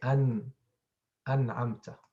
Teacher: The tongue touches the gum and the sound comes from the nose. The nasalization comes from the nose. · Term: noon sakina